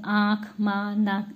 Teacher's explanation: अनुनासिक चंद्र बिंदु जिसको हम बोलते हैं, इसका उच्चारण करते समय हवा नाक और मुख दोनों से जो है निकलते, इसलिए इसको अनुनासिक कहते हैं।